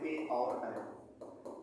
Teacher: ए, ऐ का उच्चारण स्थान कंठ तालव में होता है।